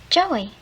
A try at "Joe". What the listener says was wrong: No, not Joey. Joe. The E is silent, right.